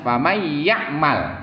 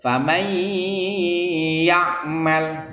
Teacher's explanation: Jadi ditahan dulu. Famay ya'mal, tahan 2 ketuk, 2 harkat. Jangan langsung. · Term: idgham bi gunnah